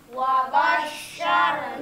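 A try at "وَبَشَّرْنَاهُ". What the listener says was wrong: Bo, bo. Nah, huruf ba jangan ditebalkan. Yang wabo, wabosh, bo, bo. Tapi ba. Wabasyarnahu.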